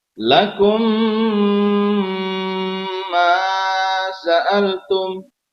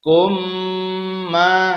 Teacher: Harus mem seperti memnya rangkap dan atau tasjid, kemudian juga harus wajib dengung. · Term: idgham mimi